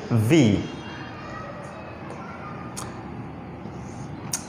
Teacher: ऊपर के दांत और नीचे की जो लिप है, होंठ है, वो टच होंगे